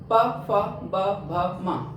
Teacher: पा वर्ग इनको हम बोलते हैं ओष्ठ व्यंजन। जब इन वर्णों को हम बोलते हैं तो हमारे ओंठ जो होते हैं वो आपस में टकराते हैं।